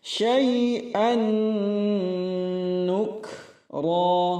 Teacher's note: Syai'an nukra, nuk hamas, kemudian ra tebal 2 harakat